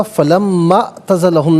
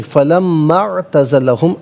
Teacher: عین کی آواز آنی چاہیے، حمزہ کی آواز نہیں۔ جزاک اللہ۔